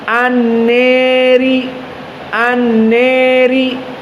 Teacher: Al-Kisai al-imalah al-kubra condongnya lebih besar kepada kasrah